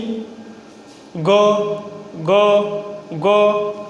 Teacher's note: अल्प प्राण है क्योंकि कम हवा निकल रहा है।